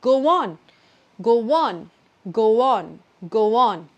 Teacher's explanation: I can make a shortcut by not stopping, but instead adding a w sound in the middle. So instead of saying go on, which is hard, I can just say go on, go on, go on, go on.